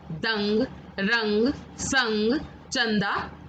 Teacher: अनुस्वार, इसका उच्चारण नाक द्वारा किया जाता है